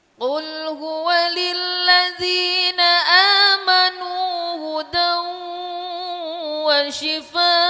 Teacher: ujungnya harus ada suara hamzah dimatiin